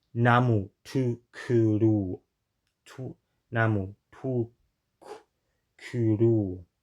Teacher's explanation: There's the rounded u and the unrounded u that have like the same height and backness. It's kind of hard for me to do both of them when they appear in consecutive syllables.